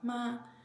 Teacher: the first tone like a flat high